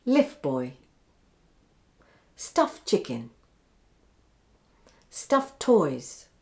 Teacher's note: end followed by a stop consonant notice how once again the t sound is dropped